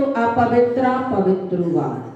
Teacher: पवित्रा आ की मात्रा कर देते हैं, विसर्ग साइलेंट हो जाते हैं